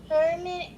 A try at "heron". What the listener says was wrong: There's no M there. There's no M, so it's not hermit. It's heron.